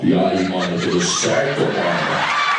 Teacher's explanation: E tem, por último, também, sotaque da periferia de São Paulo, que na periferia de São Paulo a voz das pessoas vai ficando grave